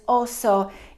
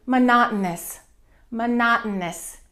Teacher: In Spanish, in Portuguese, and Italian, it's oso. In English, that O becomes reduced and it becomes a.